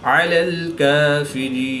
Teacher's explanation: یا ساکن سے پہلے را کے نیچے زیر ہے تو یا مدہ، یا مدہ کے بعد نون کی زبر کو وقف کی حالت میں ساکن کریں گے تو یہاں پر وقف کی حالت میں مد عارض ہوگی، 2 سے 3 الف تک کھینچ کر پڑھیں گے